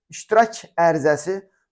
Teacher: İlk sözün son samiti kar tələffüz olunur.